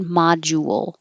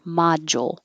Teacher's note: when you're rounding your lips and then unrounding for the L, it can make a ool, jewel. So you can make it a little more exaggerated, module, or a little shorter, module.